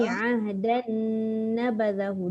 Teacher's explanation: Jangan, dia mesti jumpa nun. Dia idgham ma'al gunnah kamil, maknanya masuk sepenuhnya nun.